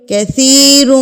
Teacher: را پیش کے ساتھ پر پڑھا جائے گا، موٹا کر کے پڑھا جائے گا